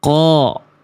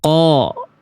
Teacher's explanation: Tetap naik pangkal lidah sehingga bunyi vokal A-nya beda sama huruf tipis. Karena bunyi vokal A-nya lebih gemuk. Kenapa? Karena terkontaminasi oleh pangkal lidah yang naik di dalam mulut kita tuh. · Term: huruf tebal